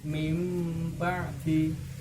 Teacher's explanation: nunnya diubah menjadi suara mim sukun